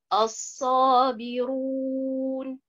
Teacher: la première prononciation qui est as-sabiroun, la lettre ra, elle est beaucoup plus emphatique